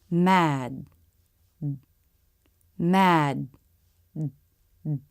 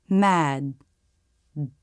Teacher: notice the last sound is the beginning of the D with the vocal cords engaged because it's a voiced consonant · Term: stop d